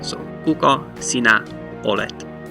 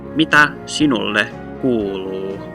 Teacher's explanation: you'll notice that the stress on each of these words is on the first syllable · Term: primary stress